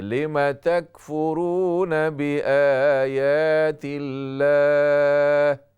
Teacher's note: میم کے زبر کو لمبا نہ کیجیے